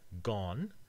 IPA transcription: gɔn